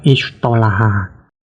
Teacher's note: digeser sifat huruf ta tersebut dari sifat huruf infitah ke sifat huruf itbaq dengan mempertahankan makhrajnya. Maka menjadi huruf ta.